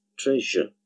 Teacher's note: And finally, there is this case of Z combining with the sound Y in the word treasure, where we get the new consonant sound J, treasure. It's not treasure, but it's treasure.